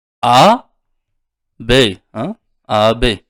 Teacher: Mana misol uchun A B, A B. Yumshoq G ni talaffuz qilganimiz yo'q. Bu tushib qolyapti. Yonidagi A harfi esa cho'ziladi.